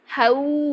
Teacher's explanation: पूरे हंठ गोल होने चाहिए आपके लास्ट में क्योंकि आगे वाव है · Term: लीन